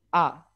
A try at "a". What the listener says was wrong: Yes, very good.